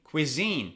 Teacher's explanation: Cuisine, it's on the second syllable.